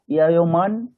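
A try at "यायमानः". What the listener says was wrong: ইয়ায়মানহ, ইয়ায়মানহ, বিসর্গ লাগান, হ্যাঁ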